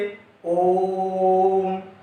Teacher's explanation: ह्रस्व वर्ण में 1 मात्रा का समय मान लेते हैं, तो दीर्घ में 2 मात्रा का समय लगाना है, और प्लुत स्वर के उच्चारण में 3 मात्रा का समय लगाना है